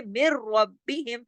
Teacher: इसको कहते हैं इदगाम ताम बिला गुन्ना, इदगाम ताम बिला गुन्ना, यानी इदगाम तो हो रहा है भरपूर लेकिन गुन्ना नहीं हो रहा